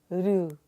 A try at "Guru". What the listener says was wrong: Guru. There's a little emphasis on the G and then the Ru. Guru. So it's not Guru or Guru or Guru, but Guru. So it's G, one beat, Ru, two beats. Guru.